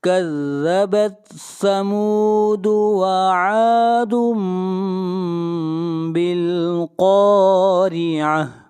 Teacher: بالقارعہ، قاف حروف مستعلیہ میں سے ہے، قاف کو موٹا پڑھا جائے گا، اور را کو باریک پڑھیں گے، اس لیے کہ را کے نیچے زیر ہے، اور آخر میں گول تا ہے، جب اس کے اوپر سٹاپ کریں گے تو یہ ہا بن جائے گی